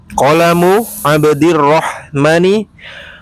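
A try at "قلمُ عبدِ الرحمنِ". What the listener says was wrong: Rahmani panjang mimnya ya. Rahman. Abdur Rahman.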